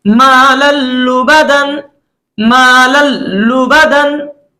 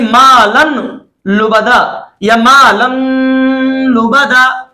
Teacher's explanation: तनवीन का जो नून है उसको नहीं पढ़ा जाएगा, बल्कि लाम को तशदीद के साथ पढ़ा जाएगा। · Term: इदगाम बिला गुन्ना